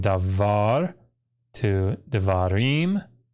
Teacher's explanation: If we put the im ending on, we remember that we get the accent shift from davar to devarim.